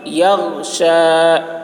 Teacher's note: غین میں قلقلہ نہیں ہوگا، آواز کو روک لینا ہے